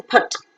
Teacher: O is centralized back just above the half closed position